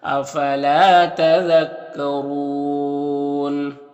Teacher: را کو پر پیش ہے، را کو پر پڑھیں گے، یہاں پر وقف کریں گے تو مد عارض وقفی ہوگا تو اس طرح سے پڑھیں گے۔